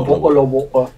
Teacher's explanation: Usually they don't actually say the T, so it's more of a bottle of water. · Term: glottal stop